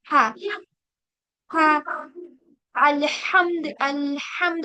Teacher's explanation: तो हा का मखरज क्या है हमारा? हलक के दरमियानी हिस्से से। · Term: मिडिल पार्ट ऑफ द थ्रोट